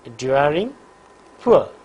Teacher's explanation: the lips are rounded for the first element and unrounded for the second element. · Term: diphthong